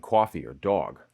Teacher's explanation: That's an onglide on the attack for the low back vowel, the long open o.